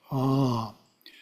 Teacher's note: The first syllable is Ah, pronounced as the English word Ah, but prolonged.